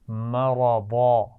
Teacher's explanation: دو زبر ہے تو اس کو وقف کرتے ہوئے الف مدہ سے بدل کر پڑھیں گے